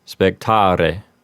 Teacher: If you're using ecclesiastical pronunciation, you would want to roll the R in spectare, and the E at the end would sound like the E in bet